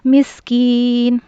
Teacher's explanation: सीन में सीटी की आवाज़ होगी